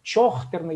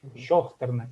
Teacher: когда вот вроде написано Ч, а в реальности многие произносят как ща